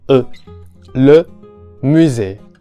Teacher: the e sound is pronounced like the e in English, but with the lips rounded